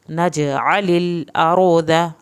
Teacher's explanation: आइन को हल्क से पढ़ना है